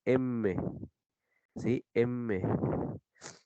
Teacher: el velo del paladar deja pasar el aire por una cavidad nasal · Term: nasales